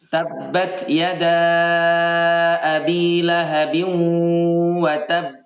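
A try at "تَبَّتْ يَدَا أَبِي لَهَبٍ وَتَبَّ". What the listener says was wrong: Masih terlalu lama. Ya, kayak gini ya coba ya. Tabbat yada abi lahabin wa tab. Pada saat kita sukun, pada waqaf, pada huruf qalqalah, itu temponya itu sama seperti tempo wasol, Ustaz. Temponya sama seperti tempo wasol.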